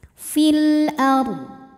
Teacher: Kemudian alif lamnya dinamakan dengan alif lam qomariyah, sebab alif lam menghadapi huruf qomariyah yaitu hamzah. Maka lam sukun dibaca jelas.